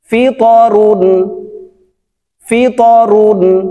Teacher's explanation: এই ত হরফটি উপরের দিকে ধাবিত করে কলকলা করে উচ্চারণ করতে হবে